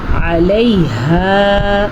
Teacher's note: عین کے مخرج کا دھیان رکھنا ہے آپ نے، اور ہا کے مخرج کا بھی دھیان رکھنا ہے. ہا کے بعد الف مدہ ہے تو الف مدہ کو ہم کھینچ کے پڑھیں گے